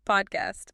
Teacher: Yeah, I feel a burst of air on my palm. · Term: plosives